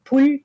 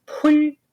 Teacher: a distinction between lax, like in pul, fire, aspirated, like pul, grass